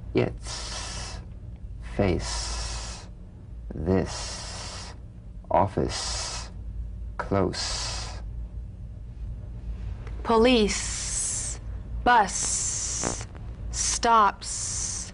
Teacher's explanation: the S is like the Z except it's unvoiced so it's the same tongue placement as the Z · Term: unvoiced s sound